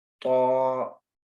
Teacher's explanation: ता और तो में यही फ़र्क है, ता को हम स्ट्रेट पढ़ते हैं बिल्कुल रिलैक्स करके, लेकिन तो को जो हम मुँह को गोल करके और मोटा अदा करते हैं, पुर पढ़ते हैं।